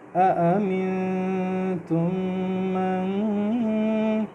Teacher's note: أأمنتم، مین پہ ہم اخفا کریں گے۔ تم کے بعد جو میم ہے آپ دیکھیں اس کو اگلے میم کے ساتھ میں غنہ کر رہا ہوں کیونکہ اس کے اگلے میم پہ شد ہے۔